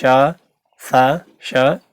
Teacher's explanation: इन वर्णों का उच्चारण करते समय श्वास मुख से रगड़ती हुई निकलती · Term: ऊष्म व्यंजन